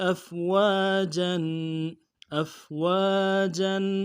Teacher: وقف کی صورت میں واو کے بعد الف مدہ کھینچنا ہے اور تنوین ہے، تنوین کو وقف کی صورت میں ایک الف کی طرح بدلنا ہے